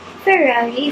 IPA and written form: fəˈrɑːri (Ferrari)